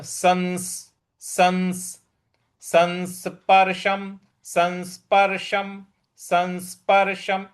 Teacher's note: स के ऊपर जो अनुस्वार है उसका न की तरह से उच्चारण करें